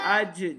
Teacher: اج جیم کے اوپر قلقلہ ظاہر کرنا ہے جیم حروف قلقلہ سے ہے